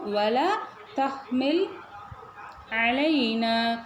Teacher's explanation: நூனுக்கு மேலே பாருங்கள் மத்து முன்ஃபசில் இருக்குது 4 கவுண்ட் நீட்டணும்